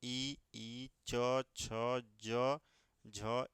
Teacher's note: इन सभी का उच्चारण स्थान की बात करें तो तालव्य से होता है